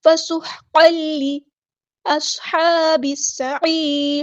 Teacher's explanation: قاف کے اوپر جو تنوین ہے اس کو لام کے اندر مدغم کر دیں گے، ادغام بلا گنہ ہوگا ، ادغام کامل ہو رہا ہے یہاں پہ، فسحقا لی اصحاب